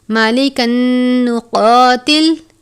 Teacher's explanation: تنوین کے بعد نون مشدد ہے، نون مشدد پر ہمیشہ غنہ کرتے ہیں، اس لیے ہم تنوین کو نون مشدد سے ملا کر ادا کریں گے.